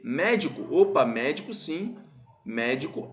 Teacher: a antepenúltima sílaba é mais forte por isso que nós temos o acento porque é uma proparoxítono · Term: proparoxítona